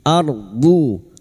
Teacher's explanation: ro sukun yang didolif fathah dibaca tafkim · lidah nempel pada gigi gerham atas boleh kiri boleh kanan